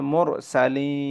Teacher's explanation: হরফে ওয়াকফ হইলে তিন আলিফ টানিয়া পড়িতে হয়, এটার নাম হচ্ছে মধ্যে আরজি। তাহলে এখানে যদি আমি ওয়াকফ করি তাহলে মুরসালিন, তিন আলিফ, হ্যাঁ।